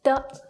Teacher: is the neutral tone which means it's light and brief